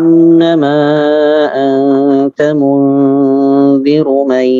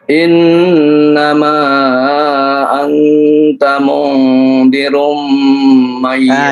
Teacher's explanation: Itu jangan dimasukkan. Ru ke mim tidak dimasukkan.